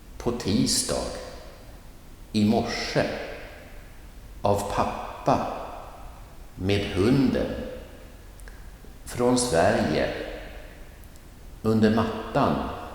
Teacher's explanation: the preposition was short and swift and non-emphasized, no stress